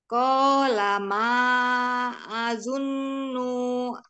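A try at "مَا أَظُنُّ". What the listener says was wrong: Azunnu, jangan dipanjangin, ditahan betul.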